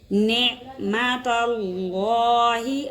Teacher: اللہ کے لام سے پہلے زبر آ گئی، اللہ کا لام موٹا پڑا جائے گا